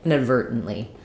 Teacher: an unreleased T, a syllabic N, another unreleased T, and an L.